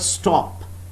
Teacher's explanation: The unaspirated t of stop, there is no aspiration when I use this phoneme in the word stop.